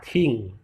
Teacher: Ada kira-kira ada aspirasinya ting gitu ya, ada suara keluar dari mulut kita. Berikutnya ada N sama ya, ini sama, L tetap sama suara ujung lidah ya.